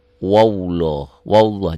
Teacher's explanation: lafad Allah yang sebelumnya baris di atas seakan-akan ada w-nya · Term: tebal